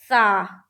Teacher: دونوں دانتوں کے بیچ زبان کو رکھیں گے اور سا ادا کریں گے